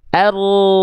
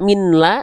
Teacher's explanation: an-nya masuk ke al ditandai dengan tanda tasydid idgham bila gunnah